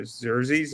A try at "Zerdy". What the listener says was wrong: Just take away the S. Take away the S.